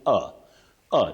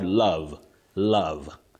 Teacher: that first letter O takes what we call the mid central sound